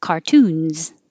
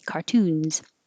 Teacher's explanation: and plural cartoons that s will sound like z